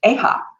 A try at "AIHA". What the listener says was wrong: It's actually AIHA. We don't try to phonetically pronounce it. It's just a little too weird.